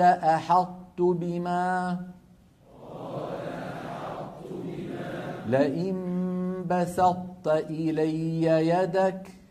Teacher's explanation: فكانت العرب تدغم الطاء الساكنة في التاء مع إبقاء صفة الإطباق، منها، ويكون ذلك بأن يطبق المتكلم لسانه على طاء غير مقلقلة ثم يجافيه عن تاء متحركة، وذلك في قوله. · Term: إدغام ناقص